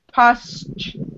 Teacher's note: this word is tricky because you have to go from s to ch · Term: ch sound